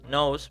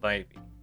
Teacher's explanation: the substitution of a nasal consonant like N or M with a non-nasal consonant